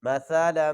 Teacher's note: یہ سا کو پڑھتے ہوئے سٹی کی آواز نہیں آنی چاہیے. مثلا، غنہ بھی کریں گے جب لام کو میم کے ساتھ ملائیں گے.